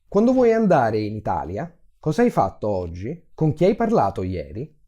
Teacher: these are all questions and the tone rises at the end.